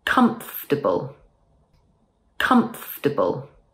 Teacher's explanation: People will understand you, but it doesn't sound very natural. Instead, let's drop the or sound and it will sound much better. So instead of comfortable, say comfortable. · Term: elision